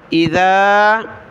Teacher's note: زبر مد کی وجہ سے اس کو کھینچنا ہے حتى اور یہاں ذال پر زبان نکالیں مد کی وجہ سے کھینچیں